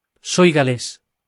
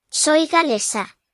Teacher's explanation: The stress falls where the accent is with gales and on the second to last syllable of galesa.